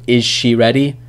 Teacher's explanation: Z sound gets assimilated with sh.